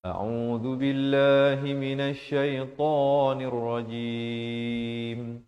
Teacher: la jalalah dibaca nipis